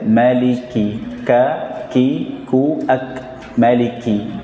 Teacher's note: Karena kaf ketika disebutkan, ketika diucapkan sudah ada hams atau aliran nafasnya, tanpa berlebihan.